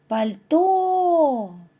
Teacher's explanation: наголос падає на другий склад